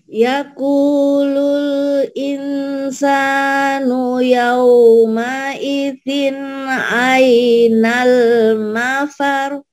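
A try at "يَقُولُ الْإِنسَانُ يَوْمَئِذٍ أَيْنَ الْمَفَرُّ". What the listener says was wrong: Lilinnya ini nggak boleh panjang nih Bu Lin tuh. Lin itu jalan, panjang tapi jalan ya. Gitu jangan jangan ditahan, kalau ditahan berarti jadi mad. Jangan jadi mad.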